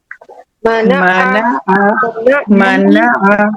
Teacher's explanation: दोनों होंठ हमारे लाइटली बंद होंगे, दोनों होंठों की खुश्की टच होकर हर्फ मीम अदा होता है।